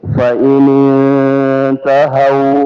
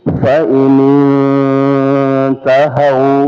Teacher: nun sukun ketemu dengan ta ikhfa. Jadi disamarkan nunnya ya tapi berdengung. Ya, jadi fa in intahaw jadi bukan hanya disamarkan fa in intahaw tapi ada dengungannya.